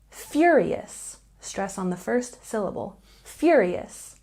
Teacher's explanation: furious has a stress on the first syllable